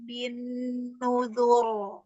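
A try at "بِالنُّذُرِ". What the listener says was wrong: Bin. Dur. Jelaskan roh. Jangan pindah makhraj ketika tebal. Ur. Ur. Bin. Nuzur. Kurang. Iya, kurang menempel di makhrajnya roh. Huruf rohnya. Roh tebalnya bergeser makhrajnya. R. Ur. Nah, bukan di rohnya. Nuzur. Di nuzur. Bin. Nuzur. Enggak. Rohnya pindah makhraj.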